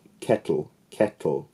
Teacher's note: the le acts as the nucleus of the second syllable so there's no actual vowel there in some pronunciations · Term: sonorant consonant